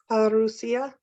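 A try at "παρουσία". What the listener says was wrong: Yeah, make this I a bit longer. Parousia.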